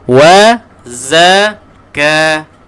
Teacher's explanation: Za pastikan ada bunyi lebah tu, lebah terbang. Bukan bunyi lebah, bunyi lebah terbang.